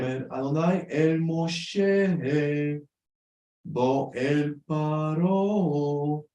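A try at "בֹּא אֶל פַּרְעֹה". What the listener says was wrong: I think you gave me a little bit more of the tikka on the paro. It should be bo.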